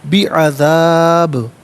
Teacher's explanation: اور یاد رکھیں کہ باء ساکن ہوگا لیکن حرف قلقلہ ہے تو آواز لوٹتی ہوئی محسوس ہونی چاہیے